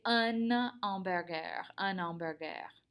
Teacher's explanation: because our n kind of makes a liaison between the vowels